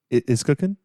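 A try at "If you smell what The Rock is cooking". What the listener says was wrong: Don't say it like a question mark.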